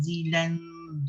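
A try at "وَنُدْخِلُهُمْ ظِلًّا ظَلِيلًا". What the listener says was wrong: Zil ada apa? Sabdu. Masukkan zul kepada lam. Zil dulu.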